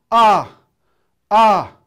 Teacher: 마지막 삼성조는 높은 데서 시작해서 높은 데로 올라갔다가 약간 떨어집니다.